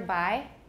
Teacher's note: bi has no aspiration it's not really voiced either by but pi is of course voiceless but it has aspiration